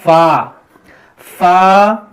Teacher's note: یہ ہندی کا پھا نہیں ہے, اس کو ہمیں پڑھنا ہے فا. اوپر کا جو دانت ہے نیچے والے ہونٹ پر جب آپ لگائیں گے تر حصے پر تو یہ ادا ہوگا فا